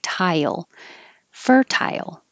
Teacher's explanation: And I made it tile, because when you say tie, your tongue goes very high, and then it slides down for the Y.